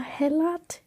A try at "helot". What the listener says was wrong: I have a feeling that's not how you pronounce it. Helot? Helot? Hilo. It's Hilo. There's a bunch of T's that are invisible, okay? In the English language.